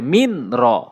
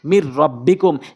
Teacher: এখানে ঈদগামে বেলা গুনার নিয়ম প্রয়োগ হয়েছে, আমরা গুন্না ছাড়া স্পষ্ট করে পড়বে।